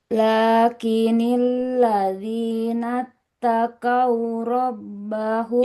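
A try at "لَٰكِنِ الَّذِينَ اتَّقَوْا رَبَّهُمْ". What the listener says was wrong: Tidak takau. Huruf qaf ya. Tidak takau. Takau.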